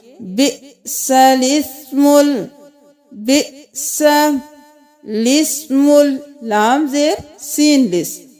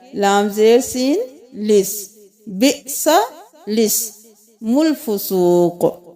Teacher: یہاں پہ الف کا کوئی کام نہیں ہے کیونکہ یہ خالی ہے، تو ہم لام کو سین کے ساتھ ملائیں گے